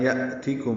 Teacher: حمزہ ساکن جھٹکے سے ادا ہوگا، میم ساکن پہ اظہار شفوی ہے.